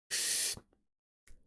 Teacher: this k is going to be breathing in so and then you just make a k sound while breathing in the k sound comes first so hit hard with the k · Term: inward k